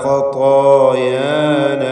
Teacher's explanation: താഇൻ്റെ ദീർഘാക്ഷരമായ അലിഫിനും രണ്ടിനും തഫ്ഖീം